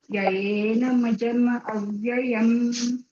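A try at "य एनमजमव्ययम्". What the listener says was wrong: સંધિ અહીંયા વચ્ચે છૂટી નથી પાડવાની, એટલે આખો શબ્દ છે યૈનમજમવ્યયમ.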